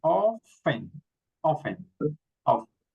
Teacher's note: here we don't pronounce the T, so we say often.